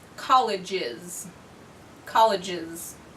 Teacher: college ends with just one of our buzzing sounds so add the syllable is